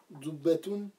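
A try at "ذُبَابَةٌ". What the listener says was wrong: Non, Zuba. Zuba, t'as sauté le Zuba Batoun. Zuba Batoun, c'est une mouche.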